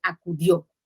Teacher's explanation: a y que son sílabas átonas porque no llevan acento y sílaba tónica dio porque tiene la tilde o se lleva la mayor fuerza de voz